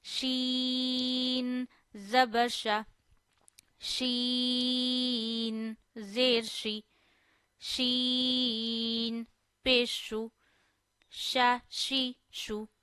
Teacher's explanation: Sheen and Jeem are pronounced from the same place. Middle of the tongue, middle of the palate.